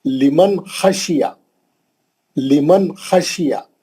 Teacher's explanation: गुन्ना नहीं करना, खींचना नहीं, लंबा नहीं करना, नून को जल्दी पढ़ना, उसको बोलते हैं इजहार।